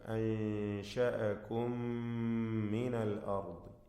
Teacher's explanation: പദത്തിൻ്റെ അന്ത്യത്തിലെ മീം ശേഷമുള്ള മീമിൽ പൂർണ്ണമായും ലയിപ്പിച്ച് മണിക്കുക.